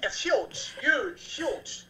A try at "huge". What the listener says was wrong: No, the H is silent. It's huge.